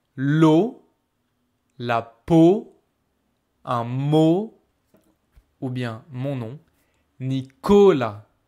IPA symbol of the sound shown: o